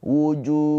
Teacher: Junnya ini dipanjangkan boleh panjang dua, boleh empat, boleh enam harakat. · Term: mad arid l sukun